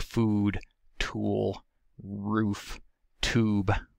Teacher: At the highest end, we have the oo vowel, a high back tense and rounded vowel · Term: high back corner vowel